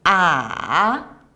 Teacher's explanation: Third tone, ah, go down and then up higher, like when you feel shocked, you will ask people, really?